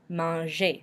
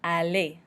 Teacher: It's an ER verb, manger. So since it's an ER verb, we do not pronounce the R at the end. It's pronounced almost like it had an E with an accent aigu at the end.